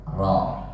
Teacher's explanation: ro antara a dan o, tengah-tengah